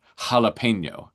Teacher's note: if you're a Spanish reader, often J is an aspirated H sound, jalapeno. So actually if you're going to be a Spanish reader and you want to represent the closest way is a h sound from a aspirated J as a that's true of so many different languages.